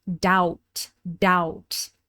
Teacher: The B is completely silent and the vowel sound is ow,